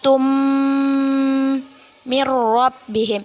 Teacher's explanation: kita dengung dan kita tahan dua harokat